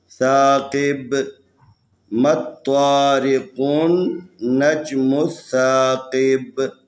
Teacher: جب وقف کریں گے با کے اوپر قلقلہ کرنا ہے